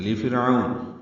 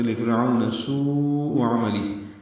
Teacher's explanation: لام کو جلدی پڑھنا ہے، را باریک